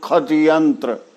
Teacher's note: श जो मूर्धन्य श है उसको लोग ख भी बनाते हैं